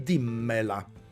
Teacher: però la M di me la raddoppia, diventano 2 M, quindi dimmela